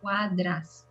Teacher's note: Abre un poquito más la A, la segunda A.